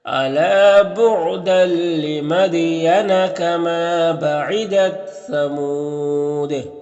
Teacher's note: لمدین دال میں قلقلہ ہوگا · ثمود یہاں پر وقف کریں گے تو مد عارض وقفی ہوگا اور دال میں قلقلہ ہوگا، تو اس طرح سے پڑھیں گے.